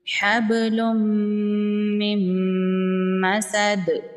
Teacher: میم کو ڈائریکٹ میم کے ساتھ ملائیں گے اور نون جو ہے یہ سائلنٹ ہو جائے گا، نون میم میں مدغم ہو جائے گا، مل جائے گا۔ · حبل من مسد، دال حروف قلقلہ میں سے ہے، تو دال پر جب وقف کریں گے تو دال ساکن ہو جائے گا اور دال ساکن پر قلقلہ ہوگا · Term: ادغام